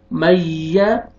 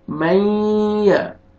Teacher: तो यहाँ पे इदगाम करेंगे गुन्ना के साथ, मई, या जबर या, मैया, ऐसे नहीं पढ़ना अपना, मैया गलत, नोज में साउंड लेके जाएंगे, गुन्ना करेंगे